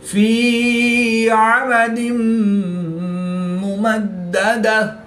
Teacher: 2 زیر کی تنوین کے بعد میم حروف یرملون میں سے ہے تو یہاں پر ادغام مع الغنہ ہوا یعنی غنہ کر کے پڑھیں گے. دال مشدد ہے تو یہاں پر قلقلہ کبرا کر کے پڑھیں گے.